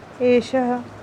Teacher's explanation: जब हम विसर्ग वाले शब्दों का उच्चारण करते हैं तो उसके उच्चारण के समय बाद में हमें ह की आवाज़ भी आती है। जैसे अगर मैं भी इस शब्द को बोलूँ तो इसे हम एषः पढ़ेंगे।